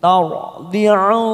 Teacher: ada mat bertemu hamzah di lain kalimat, namanya mat jaiz munfasil, kita panjangkan 5 harokat